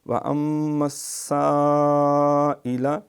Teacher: یہ پھر سین پہ شد ہے، دو دفعہ پڑھیں گے اہتمام سے